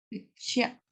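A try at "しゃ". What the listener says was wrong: Si dices shia, no hay del todo combinación. Es sha directamente. Sin i.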